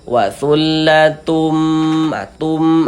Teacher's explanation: Kemudian di bagian tumnya itu suaranya itu kita tahan, kita panjangkan sejenak, kita panjangkan sebentar, kita gunnahkan sepanjang 2 harokat. Wasullatum, tum, dipanjangkan sebentar.